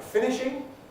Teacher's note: that's a strong I in fin, but the other ones really look like weak I.